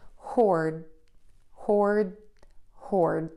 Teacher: if you keep the tongue behind the top front teeth for that D sound, you are not going to have as much air puff out and it will sound like this, hoard, hoard, hoard. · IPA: /hɔrd/